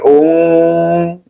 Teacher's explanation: Nunnya dibaca samar sedikit berdengung. Ung yang kedengaran adalah eng ya.